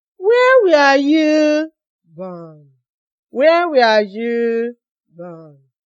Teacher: So my voice went down at the end of the question. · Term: falling tone